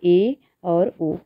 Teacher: इन स्वरों के उच्चारण में जिह्वा की ऊंचाई समृद्ध से कम रहती है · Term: अर्ध समृद्ध